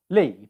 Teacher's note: It's halfway in between a long E sound and a short I sound, in the sense that pronunciation-wise it's short, but position-wise it's E. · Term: weak vowel